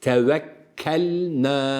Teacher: lam la nuna dikkat önce lam çıkacak ardından nun çıkacak